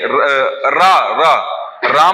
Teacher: राम में जो रा होता है वो लुंठित और प्रकंपित कहलाता है।